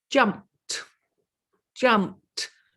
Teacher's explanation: that ed at the end is making a t sound